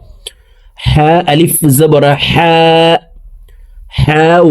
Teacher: হা হরফকে হলকের মধ্যখান থেকে উচ্চারণ করব, কারণ হার মখরাজ হলকের মধ্যখান থেকে হবে।